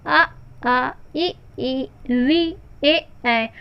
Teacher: तो हमारे ओष्ठ जो है उनकी आकृति वृत्ताकार नहीं हो रही है। तो इस तरह से यह जो है वह आवृत्तमुखी या आवृत्ताकार स्वर कहलाते हैं।